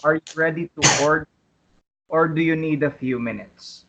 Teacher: notice the rising intonation on order and the falling intonation on minutes